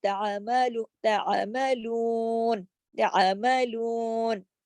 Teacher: الا ما تعملون، تعملون، اس کو تعملون نہیں، عین کو تھوڑا سا آپ حلق کی طرف جب آواز کو لے کے جائیں گے، تعملون. لو کو کھینچنا ضروری ہے کیونکہ واو مدہ لگا ہوا ہے. واو مدہ اگر آپ نے چھوڑ دیا اور تعملون کر کے آپ چلی گئی تو آپ نے حروف ایک حرف کو ضائع کر دیا، نقصان کر دیا، تو یہ گناہ ہوتا ہے.